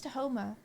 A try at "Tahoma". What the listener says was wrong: It sounds like you're saying Tahomer. Tahomer. Tahomer.